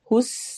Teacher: सीन सीटी वाली आवाज होगी